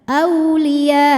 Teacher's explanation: jadi panjangin dulu ya-nya kemudian hamzahnya kita naberkan ya masuk ke Hamzah naber Auliya tekan sampai masuk ke Hamzah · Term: mad wajib muttasil